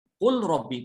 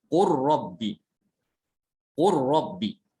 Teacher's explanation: Yang pertama al-awwal al-lamu sakinah fi ra. Jadi yang pertama adalah lam sukun diidghamkan kepada ra ya.